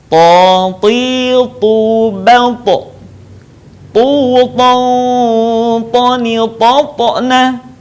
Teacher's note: ketika kita melafalkan huruf to dalam keadaan mati, suaranya terdengar memantul.